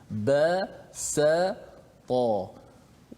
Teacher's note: Pangkal lidah kita tak terangkat menyebabkan huruf tu nipis. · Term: istifal